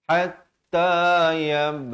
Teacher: Ha pedas di pertengahan kerongkong.